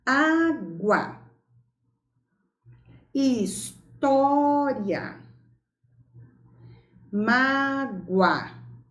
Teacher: nessas 3 palavras, o ditongo é oral e é crescente. Água, U é semivogal, A é vogal. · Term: ditongo oral crescente